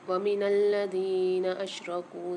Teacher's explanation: دال کے ساتھ یا ساکن ہے اور کاف کے ساتھ بھی واو ساکن ہے، دونوں کو ایک ایک الف مقدار کھینچ کے پڑھیں گے